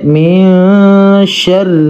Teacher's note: را کو پر کر کے نہیں پڑھنا، یہاں پہ زیر ہے نیچے، اور زیر جب بھی را پر آ جاتی ہے پر نہیں ہوتا۔